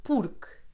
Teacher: The final E in porque is silent, very different from the Spanish.